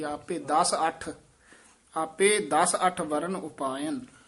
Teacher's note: ਦਸ ਪੋਲਾ ਬੋਲਣਾ ਅੱਠ ਕਸ ਕੇ ਬੋਲਣਾ